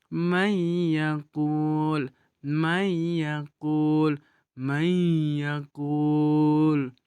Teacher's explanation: kita membaca hukum nun mati atau tanwin tersebut dengan dengung dibarengi dengan huruf selanjutnya yaitu huruf huruf yaqu kita mendengungkan bacaan tersebut kemudian selanjutnya n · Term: idom guna, idgham bil gunnah